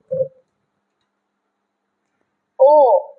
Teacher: কণ্ঠ প্লাস অষ্ঠ অষ্ঠ মানে ঠোঁট কণ্ঠ মানে এই অংশ ও ঠোঁট আর কণ্ঠ দুটোর মিলিত উচ্চারণ হচ্ছে ও কণ্ঠ অষ্ঠ ঠোঁটের এক্সপ্রেশন বদলে যাচ্ছে ও ঠোঁটের ধরণ পাল্টে যাচ্ছে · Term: কণ্ঠষ্ঠ